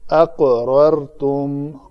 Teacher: قاف کو میں نے قلقلہ کیا، اس کے مخرج کو ادا کرنے کے بعد فوراً چھوڑ دیا